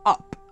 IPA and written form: ʌp (up)